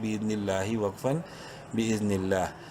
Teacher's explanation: لفظ اللہ سے پہلے زیر ہے، لام کو بولڈ نہیں کرنا لیکن لمبا ضرور کریں گے ایک الف کے برابر